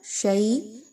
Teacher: شین زبر یا، شئی یا پر جزم کا نشان ہے اور اس سے پہلے شین پر زبر ہے۔ یائی لین ہے، 1 سے 2 الف کے برابر یائی لین کی ادائیگی رکھیں گے۔